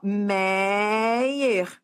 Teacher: paroxítona porque a sílaba forte é esse E, Meyer, que não termina em A, E, O, em ENS, ou seja, termina em R, tá?